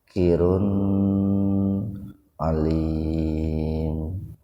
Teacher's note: domatain ketemu ain, jadi betul-betul dibaca jelas di tenggorokan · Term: idhar khalqi